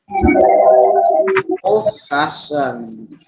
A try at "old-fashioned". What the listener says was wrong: Forget your D, buddy. Old-fashioned. Really small D.